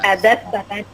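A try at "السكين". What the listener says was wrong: bukan sakan, sikin. Itu harokatnya ada di bawah tasdid.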